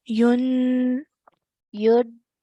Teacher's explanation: let's try and just elongate the noon sound a bit more.